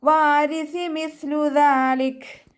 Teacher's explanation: സ ലൈറ്റ് ആക്കിയിട്ട് ഉച്ചരിക്കുക. നമ്മുടെ മേലെ മുൻപല്ലിൻ്റെ അറ്റവും നാവിൻ്റെ അറ്റവും ചേർന്നിട്ടാണ് സ പുറപ്പെടുന്നത്. നാവിൻ്റെ കുറച്ച് രൂപം പുറത്തോട്ട് കാണുന്ന രൂപത്തിൽ വെച്ചിട്ട് കുറച്ച് എയർ പാസ് ചെയ്യുന്ന സൗണ്ടും കൊടുക്കുക കേട്ടോ.